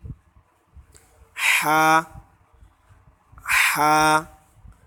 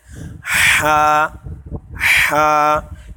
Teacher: हा इसको हमें हलक के यानी गले के बीच में से हवा के साथ निकालना है